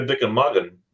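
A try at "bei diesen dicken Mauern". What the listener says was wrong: Not not Magen, Mauern.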